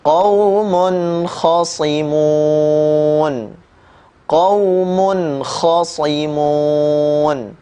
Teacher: qaumun ya huruf mim harokannya dhammatain bertemu dengan huruf kha, maka dibaca dengan suara yang jelas